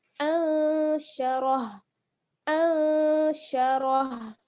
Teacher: इसी तरीके से अंशरह में अगर आप ठहरेंगी तो आप रा के साथ फिर हा को मिला देंगी, हा को साकिन कर देंगी, रा हा ज़बर रह, राह नहीं पढ़ना है बल्कि रह, क्योंकि रॉ पुर है ना